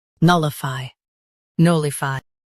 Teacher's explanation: null i fy, nullify null i fy, nullify Stress null and keep a-f-y light.